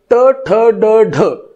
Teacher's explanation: कठीण टाळूचा जेव्हा आपण विचार करतो मध्यभागी टणक असलेला भाग, तर तिथं ट ठ ड ढ हे जे व्यंजन तयार होतात किंवा स्वन तयार होतात तर ते कठीण टाळूला जिभेचं टोक लावून तयार होतं. आपण जिभेचं टोक जर त्या कठीण टाळूला लावलं नाही तर ट ठ ड ढ निर्माणच होणार नाहीत.